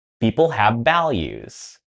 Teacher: I mispronounced the V sound have and value. My lips were together. Now again the V sound should be the upper teeth and the lower lip together.